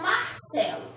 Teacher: Ela tá em penúltimo lugar, né? A minha sílaba tônica é a penúltima.